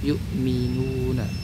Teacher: Nah, itu juga huruf mad. Wau sukun sebelumnya dommah itu apa? Huruf mad. Kadar panjangnya juga sama dua harakat.